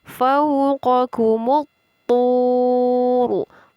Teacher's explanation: Terdapat hukum bacaan alif lam, yaitu di sini alif lam syamsiyah, ditandai dengan harokat tasydid pada huruf ta. Jadi alif lam syamsiyah tidak terbaca.